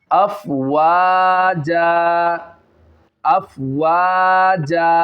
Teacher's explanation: اگر دو زبر کی تنوین آ جائے وف کی حالت میں تو اس کو الف سے بدل دیتے ہیں، تو اس میں ہم نے الف مدہ سے اس کو بدل دیا، افواجا، افواجا۔